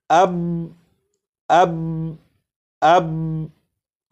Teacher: با کو پڑھ کر آواز کو ختم نہیں کیا جا رہا بلکہ با کو پڑھ کر آواز کو روکا جا رہا ہے